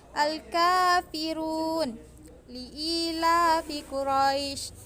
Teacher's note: hukum membaca huruf ra dengan mengucapkan secara tebal sampai memenuhi mulut ketika mengucapannya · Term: ra tafkim